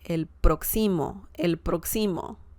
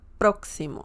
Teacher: You have the emphasis on the first syllable